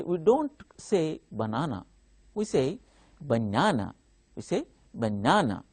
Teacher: while we are saying banana the second syllable stands out that is why we have to mark on that second syllable